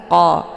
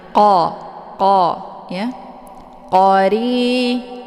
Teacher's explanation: Letak posisi huruf qa ini yaitu di pangkal lidah dekat dengan anak teka. Jadi saat melafadzkan, pangkal lidahnya naik ke atas tersentuh dengan langit yang lunak.